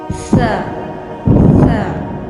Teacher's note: جب آپ اپنی زبان کی نوک کو آگے کے اوپر اور نیچے والے دانتوں کے درمیان میں رکھ کر کہیں گے تو سا ادا ہوگا